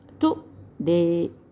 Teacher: The stress is on the second syllable, तो जो stress है वो दूसरे सिलेबल पर है।